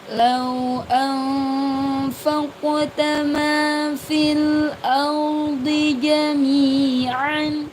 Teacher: Penekanannya ada di nun sukun bertemu dengan fa dibaca samar. Nun sukun bertemu dengan fa dibaca samar.